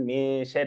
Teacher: لاحظ هنا الراء مرققه شري لانها مكسوره